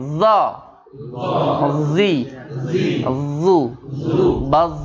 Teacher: Mengangkat lidah sehingga terdengar bunyi suara yang menebal atau dibaca tebal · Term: isti'la